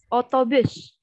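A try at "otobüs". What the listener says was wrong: Otobus. Jadi u-nya yang terakhir u titik u. Otobus. Ucap c-nya jangan terlalu kayak sh, karena dia c-nya s. Sek biasa. Otobus.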